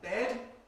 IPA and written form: bed (bed)